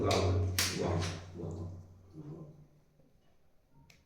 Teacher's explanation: वकार का उच्चारण स्थान दंत ओष्ठ है, वाह बोलते वाह, तो दंत और ओष्ठ वाह, दांतों के पास की जीभ आती है और ओठ के पास आती है, वाह वाह, यही दूसरी व्याकरण में भी।